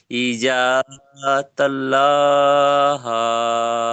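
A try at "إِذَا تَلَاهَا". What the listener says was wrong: আচ্ছা, ইজা তাল্লাহা আপনি বললেন। ইজা তাল্লাহ হলে এই লামের উপরে একটা তাসদিদ থাকতো। দেখেন, তা জবর তা, লাম খাড়া জবর লা, তালা।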